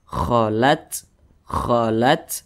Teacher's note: ketika membunyikannya itu ada desisan angin yang berhembus yang keluar daripada mulut kita khat kholat nah seperti itu seperti ada di Sisan ular kholat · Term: hamesah